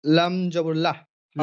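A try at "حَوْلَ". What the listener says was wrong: লাম জাবার, লামটা টান দিয়ে বলেন। লাম জাবার লা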